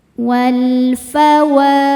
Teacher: Selanjutnya alif lamnya dinamakan dengan alif lam qomariyah, sebab alif lam menghadapi huruf qomariyah yaitu fa. Cara bacanya lam dibaca idhar atau jelas.